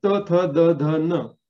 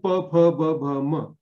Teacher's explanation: त थ द ध न हे दाताला, आणि प फ ब भ म हे ओठाला.